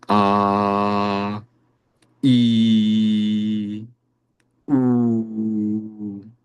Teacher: त्रिमात्र प्लुतः तो इसमें उच्चारण को और लंबा समय दिया जाता है।